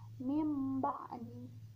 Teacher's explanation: mengubah nun sukun dan tanwin menjadi mim sukun lalu disembunyikan ke dalam huruf ba yang berbaris disertai dengan dengungan. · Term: iqlab